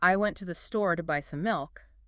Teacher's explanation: we would stress the words went store and milk